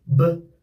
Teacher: b, bird. Starts with a voiced b and ends with another voiced d.